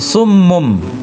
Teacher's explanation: Jadi mun itu jadi mum ya karena ada ba sesudahnya ini ya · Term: iqlab